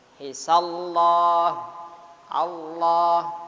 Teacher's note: Allahnya harokat fathah menghadapi lam jalalah, maka lam jalalah dibaca tafkhim tebal.